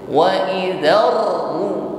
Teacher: ketika menekan pertama kali itu belum mencucu baru ketika mengucapkan ru bibir baru mencucu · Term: ro